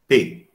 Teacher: Antes de pronunciar P, eu faço um movimento de catástase, né? Eu fecho os lábios e faço a explosão. P. Então, tipo de obstrução total. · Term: oclusiva bilabial desvozeada